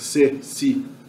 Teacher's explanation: O S é pronunciado com a ponta da língua no alvéolo, que é a parte frontal do sol da boca.